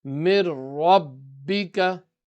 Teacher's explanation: ba is mushaddad, ba is also qalqala, so you will read with the echo emphasis